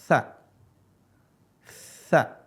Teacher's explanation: Ujung lisan ketemu dengan gigi seri bawah. Kalau ini, ujung lisan ketemu dengan ujung gigi seri atas.